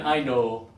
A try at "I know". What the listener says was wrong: Pull your lip down a little more. Yeah, but think about your lip over your teeth.